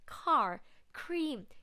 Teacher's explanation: when you pronounce the k sound you breathe out a lot of air